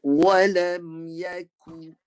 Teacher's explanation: Jangan naik ke pangkal lidah. Guna kaf tengah bahagian belakang tapi tak sampai belakang. Bunyi dia nipis.